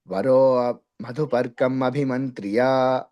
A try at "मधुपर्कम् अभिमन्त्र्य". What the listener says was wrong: మధుపర్కమభిమంత్ర్యా. మధుపర్కం సున్నా చెప్పకండి. మధుపర్కమభిమంత్ర్యా. మధుపర్కమభిమంత్ర్యా.